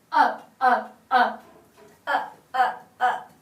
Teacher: she demonstrated a hard glottal attack